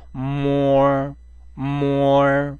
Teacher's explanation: 폴, 폴. 자, M은 모와 머의 중간음. 그리고 코소리를 좀 섞어서